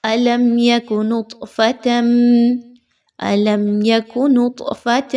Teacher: طا حروف قلقلہ قطب جد میں سے ایک حرف ہے، تو اس وجہ سے اس کو تھوڑا سا ہلا کر پڑھا جائے گا